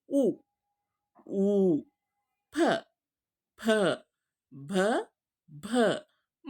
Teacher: ಹೇಳುವಾಗ ನೋಡಿ ಎರಡು ತುಟಿಗಳು ಏನಾಗುತ್ತೆ ಹತ್ಿಕೊಂಡು ಉಚ್ಚಾರಣೆ ಆಗುತ್ತೆ ಹೌದಾ ಅದಕ್ಕೆ ಹೇಳೋದು ಓಷ್ಟ ಅಂದ್ರೆ ಒಂದು ತುಟಿಯ ಸಹಾಯದಿಂದ ಒಂದು ಉಚ್ಚಾರಣೆ ಆಗ್ತಕ್ಕಂತಹ ಅಕ್ಷರಗಳು